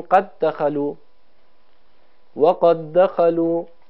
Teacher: ما به جای اینکه دو تا دال تلفظ کنیم، یک دال مشدد تلفظ کنیم